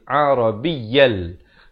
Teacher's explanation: Ya tu tanwin dua di atas bunyi yan. Tapi bila datang lam jadi hukum idgham bila gunnah, masuk tanpa dengung jadi Arabiyal.